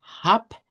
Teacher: La B se cambia por por P y se diría con la H sonada, la A larga y una P al final